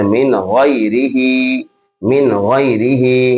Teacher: नून साकिन के बाद गौइन, तो गौइन आने की सूरत में क्या होगा, यहाँ इजहार, यानी बगैर गुन्ना के पढ़ना है, जैसे अजरुन गैरुन, या इसी तरीके से मिन गैरिही, मिन गैरिही, तो यहाँ पर क्या होगा, इजहार।